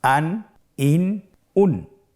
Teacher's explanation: প্রত্যেকটি উচ্চারণের শেষে দন্ত ন উচ্চারিত হচ্ছে